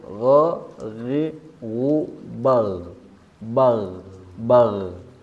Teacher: huruf ghain ini bersifat rokhawah, mengalir begitu saja tanpa tekanan. Berarti jangan sampai ditempelkan akar lidahnya ke langit-langit mulut yang lunak.